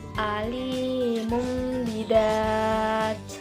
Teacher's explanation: dibaca dengan pengucapannya seperti Huruf mim dan didengungkan sepanjang bisa didengungkan dan disamarkan sepanjang dua Harvard contoh lainnya yaitu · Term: iqlab, iklab